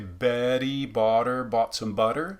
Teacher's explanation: I like to represent that D-like T sound, Betty, as a tapped R, because I think it's very much like the Spanish as in pero, meaning but, pero, as opposed to the trilled perro, meaning dog, perro, pero, Betty. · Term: tap or flap R